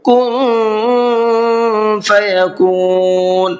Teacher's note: کن کے نون کے اندر اخفا کریں گے، اس لیے کہ نون ساکن ہے اور نون ساکن کے بعد میں فا آ رہا ہے اور فا اخفا کے حرفوں میں سے ہے۔